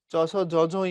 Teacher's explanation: চ ছ জ ঝ ঞ এগুলো তালুতে, তাই এগুলো তালব্য।